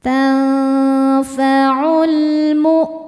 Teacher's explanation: Berikutnya ada alif lam qamariyah karena alif lam menghadapi huruf qamariyah yaitu mim. Cara bacanya lam dibaca dengan idhar atau jelas.